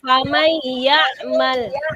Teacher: Jadi huruf nunnya dimasukkan kepada huruf sesudahnya. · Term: idgham bigunnah